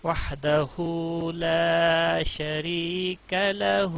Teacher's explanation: شری را باریک پڑھا جائے گا کیونکہ اس کے نیچے زیر ہے، زبر اور پیش کی صورت میں پر پڑا جاتا ہے.